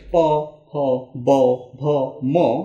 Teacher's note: খেয়াল করলে দেখা যাবে প হ ব ভ ম সেগুলো ঠোঁট থেকে উচ্চারণ করা হয়। আর যেহেতু প ফ ব ভ এগুলো ঠোঁট থেকে বা ওষ্ঠ থেকে উচ্চারণ করা হয়, এই জন্য এগুলোকে বলা হয় ওষ্ঠবর্ণ।